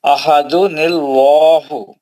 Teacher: احدن اللہ نہیں موٹا پڑھنا ہے، لام جلالہ ہے